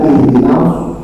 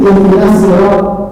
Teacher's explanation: penggabungan nun dengan shad, maka harus benar-benar itu hurufnya langsung ke shad, bukan ke sin. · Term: huruf shad